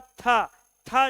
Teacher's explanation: तय के बाद था, था जैसे बोलते हो वायु की मात्रा ज्यादा भर जाती है